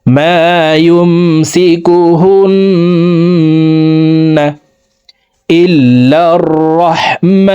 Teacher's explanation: ওয়াজিব গুন্না 3 সেকেন্ড পরিমাণ গুন্না করে পড়ব